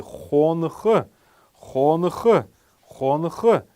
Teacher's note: Первый неясный гласный будет стоять после буквы Н. Мы должны его произносить как фоновый звук, такой фоновый шум. И после буквы Х тоже обязательно, так как это глагол.